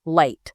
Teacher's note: The L sound involves the very tip of your tongue touching the little ridge just behind your upper teeth, light. Whereas the R is that pulled back tongue position with no touching rake, right?